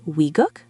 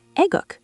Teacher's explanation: It can sound like we or even just ae, depending on the speaker.